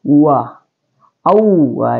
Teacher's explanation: Wa adalah asyafatain ya, keluar di 2 bibir.